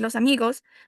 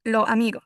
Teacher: Se pierde la S al final.